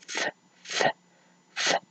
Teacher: there is no vibration there. Therefore, it's voiceless.